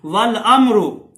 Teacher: इजहार होगा, पूरी मीम पढ़ी जाएगी